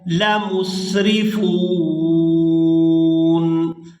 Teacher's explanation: وقف کی صورت میں نون کو ساکن کر دیا جائے گا،